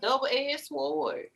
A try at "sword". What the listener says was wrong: She pronounced both the S and the W.